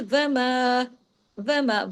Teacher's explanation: व सिंगल है वाव एक हरकत के साथ है जबकि मा जो है वो दो हरकात के साथ है